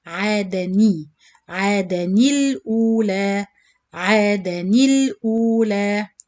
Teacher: So to join the tanween or the noon sakin with lam qamariya, you change the noon sakin into kasra. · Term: noon kasra